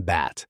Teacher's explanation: Keep lowering the tongue and you move through E, as in bet, down to A, the low front vowel in bat.